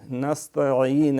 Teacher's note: عین پڑھنی ہے، حمزہ نہیں